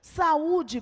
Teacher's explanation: Vejamos aqui, saúde, por exemplo, nós temos o encontro do A e do U, e na separação silábica, na pronúncia, as 2 vogais terão que ficar separadas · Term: hiato